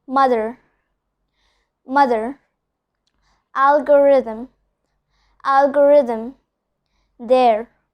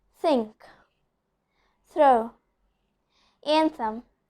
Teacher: So here I'm pronouncing all the TH as voiced one. I'm not telling it as the de-voiced one. Instead I'm telling it's the voiced one.